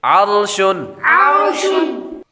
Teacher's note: اس لفظ کے اندر را ساکن سے پہلے حرف یعنی عین پر زبر ہے تو را کو پر پڑھیں گے